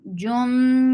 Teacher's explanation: As, wa, wow circles make it two counts long. Jum, idgham bitghunna, so keep the sound in your nose for a longer time. Jummu, for the circle lip and lips.